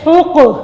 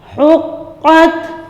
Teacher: ح قاف پیش حق، قاف کا قلقلہ کریں گے، یہ حروف قلقلہ میں سے ہے۔ قاف تا زبر قت، حقت، وقف بھی ایسے کریں گے، حقت۔